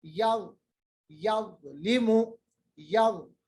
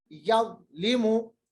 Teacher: जबान की नोक ऊपर वाले दांतों का किनारा